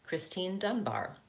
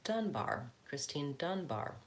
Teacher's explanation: Notice the second time I said that, Christine Dunbar, the stress was on the first syllable of my last name. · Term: stress the last name